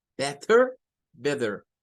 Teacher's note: hay muchos norteamericanos que cambian el sonido de la T por una R y dicen better